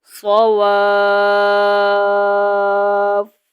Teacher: وقف میں آپ نے فا کو نرمی کے ساتھ ہونٹوں سے ادا کرنا ہے